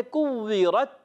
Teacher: تا کو باریک رکھنا ہے. اچھا، تا پر جب وقف کرتے ہیں ایک آواز آتی ہے کوورت، تو یہ ہے شدیدہ محموسہ حرف · را پر زبر آ رہی کہ جیسے را پر ہو جائے گا، موٹا پڑھیں گے را کو، مگر تا کو باریک رکھنا ہے